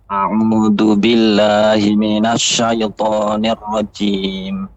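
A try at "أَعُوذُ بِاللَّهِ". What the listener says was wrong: Billah ya, koreksiannya a'udzu billah, a'udzu ya, za ya, pengucapan za dia lidah dengan gigi seri atas, za, a'udzu. A dan ain itu juga tidak boleh tersambung, nggak boleh bergabung, tidak, tapi a'u, a'udzu billah ya.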